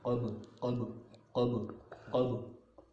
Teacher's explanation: ان پر کلکلا ہوتا ہے، ڈبل آواز آنی چاہیے